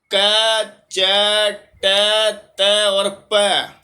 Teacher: यह स्पष्ट भी है, विवार है, श्वास है, अघोष है और अल्प प्राण है।